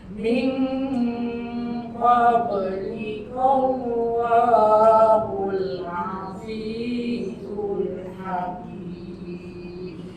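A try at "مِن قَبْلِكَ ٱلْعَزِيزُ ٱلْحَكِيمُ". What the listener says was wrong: A macam tak berapa keluar ha pedas tu. Ha tak cukup pedas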